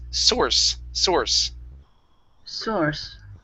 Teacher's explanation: okay this is an unvoiced S